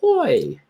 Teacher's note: when you're finished with the oi sound, you should be able to smile with that long e sound